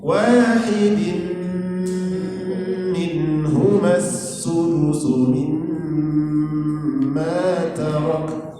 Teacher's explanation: Idgham artinya memasukkan, gunnah artinya berdengung. Jadi bunyi n itu dimasukkan ke huruf mim, kemudian disertai dengan dengung. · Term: idgham bi gunnah